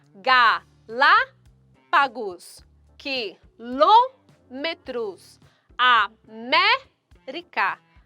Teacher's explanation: A sílaba tônica destas palavras encontram-se na antepenúltima sílaba. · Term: proparoxítonas